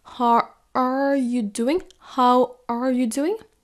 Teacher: le are n'est pas prononcé aussi fort que les autres mots de la phrase